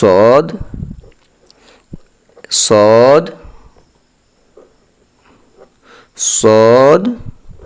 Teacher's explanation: আমাদের সদটা হবে চার আলিফ টান